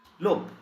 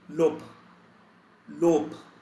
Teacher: we make very close sound with very close sound to p. So we devoice the sound of b